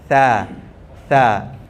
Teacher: Huruf sa makhraj dia adalah lidah menyentuh gigi bahagian atas kan? Sa. Tapi bila kita dengung, lidah jangan letak di situ lagi.